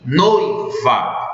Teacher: Pronunciem noiva e percebam que na primeira sílaba você já pronuncia tanto a vogal O quanto a semivogal I